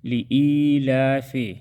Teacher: لی یا مدہ ہے، اس کو ہم ایک الف کے برابر کھینچ کر پڑھیں گے۔ لإیلاف، کڑی زبر کو بھی ایک الف کے برابر کھینچ کر پڑھیں گے۔